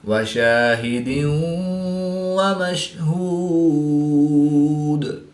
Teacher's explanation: والیوم الموعود وشاہد ومشہود۔ 2 زیر کی تنوین کے بعد واو حروف ینملون میں سے ہے تو یہاں پر ادغام مع الغنہ ہوگا